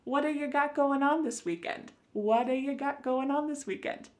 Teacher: that T at the end of the word what is going to change to a D sound. This is really typical of American English where a T that's surrounded by vowel sounds is going to change to a D. · It's called a flapped T and it just kind of uh rolls off your tongue in a smooth way.